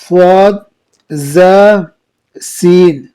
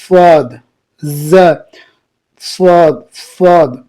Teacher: حروف صفیہ زبان کی نوک اور دونوں دانتوں کے اندرونی کناروں سے ادا ہوتی ہے